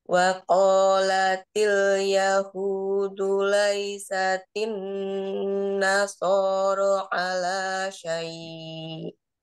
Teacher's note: nasoro sama panjangnya sor dengan ro